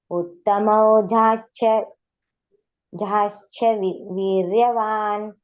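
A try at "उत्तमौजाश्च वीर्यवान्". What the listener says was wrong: ಅದೇ ಶ ಕೆ ಚ ಒತ್ತು ಇದೆಯಲ್ಲ ಸ್ವಲ್ಪ ನೀವು ಅಲ್ಲಿ ನೀವು ಗೊಂದಲ ಮಾಡ್ಕೊಳ್ತೀರಾ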